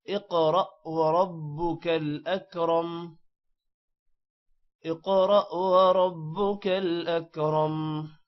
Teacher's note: را موٹا ہے اور اکرم کا را بھی موٹا ہے